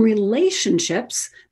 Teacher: So in relatives, it's right, it's a T as we would expect, but in relationships, that T becomes a sh